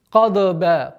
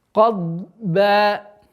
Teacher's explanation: у звука дад отсутствует свойство взрывности